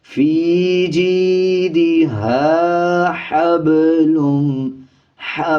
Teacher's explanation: یہ پہلے موٹا ہا یعنی پر پڑھیں گے، اس کے بعد باریک ہا ہے